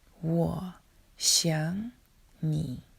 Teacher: Look at the example, I miss you, and listen to the sentence. 我想你 Notice a 3rd tone changes into the 2nd.